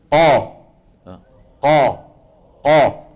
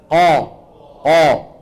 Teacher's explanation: تجد بان صوتك ضغط لفين لقبه الحنك لفوق لسقف الحلق وفي نفس الوقت بتشعر بانه لسان المزمار شو عمل رجع قليلا الى الوراء قا جرب قا قا مالك شايف كيف لسان مزمان رجع لورا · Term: التفخيم